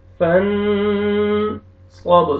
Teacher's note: نون ساکن کے بعد حروف اخفاء میں سے صاد ہے، یہاں پہ اخفاء کریں گے